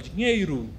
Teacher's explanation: São 2 letras que representam um som apenas. E o O aí está com som de U. Você pode perceber que na nossa língua falada a gente utiliza muito, a gente não fala dinheiro, a gente fala dinheiro, tá?